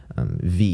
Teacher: this is called the labial dental fricative a voice labial dental fricative